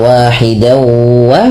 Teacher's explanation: sama ditahan juga dawunya 2 harakat karena ia baca idgham bi gunnah